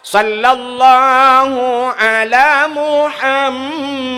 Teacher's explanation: Muhammad ji yang bertasydid kan. Gunnah yang dengung idgham.